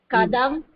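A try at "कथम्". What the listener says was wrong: Okay, இப்போ அது கதம் இல்லமா, கதம். கதம் த ரெண்டாவது த. அது நம்ம இந்த கீழே தமிழ்ல கொடுத்து தப்பு பண்ணிடுறோம், கொடுக்க கூடாது. அத நம்மளுக்கு வந்து அது நம்ம வந்து அதை பார்த்தோம் அப்படின்னா தப்பா படிச்சிருவோம். You should not see the Tamil.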